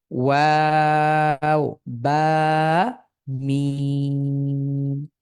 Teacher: বা ঠোঁটের সাহায্যে যেটা উচ্চারিত হয়।